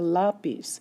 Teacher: So the stress is here on the la. even though the word ends in a consonant and you expect it to be on the end of the word.